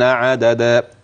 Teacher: وتنبه لمد العوض في قوله عددا حيث انك تبدل التنوين بالفتح الفا عند الوقف